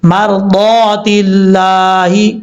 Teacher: ایسا نہیں ہے کہ ہمارا دعا یعنی ایک دفعہ دعات کو پر پڑھ لیا پھر بریک، نہیں، جب تک اس کو لمبا کریں گے پوری پڑھا جائے گا، موٹا پڑھا جائے گا، مرضات اللہ، اس طریقے سے۔ لفظ اللہ سے پہلے زیر ہے، لفظ اللہ کو بریک پڑھا جائے گا